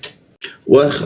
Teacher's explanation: Wah masuk ke kha dia. Wah di atas jakun dia huruf kha ada ngoroknya ya